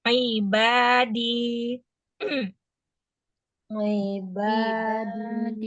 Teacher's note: Ba dibaca panjang karena alif. Di dibaca panjang karena ya.